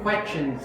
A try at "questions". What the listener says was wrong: Questions. Where's your S? There is S here, right? Don't forget that S. you know that is the common problem of Vietnamese students.